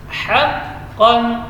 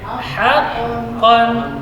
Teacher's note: Kalau ha-nya tetap tipis. Jadi tidak boleh ha dibaca tebal karena pengaruh qaf.